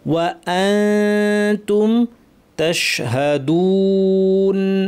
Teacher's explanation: আকরারতুম ওয়া আনতুম, ওয়া কমপ্লিট, হামজা শক্ত, নুন সাকির পর তা, একটু আগে দালের যে মাখরাজ দেখলাম সেখান থেকেই তা হবে, উপর পাটির দাঁতের গোড়া কাছাকাছি জিব্বা নিয়ে নাক থেকে গুন্না